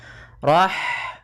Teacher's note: kemudian Rahmani pada lafaz Rahmani ada H sukun maka di sini H mempunyai sifat yaitu sifat Hames maka alirkan nafas kita